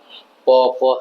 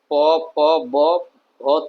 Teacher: दोनों होठ सटते हैं, तो ये होठ से हो गया।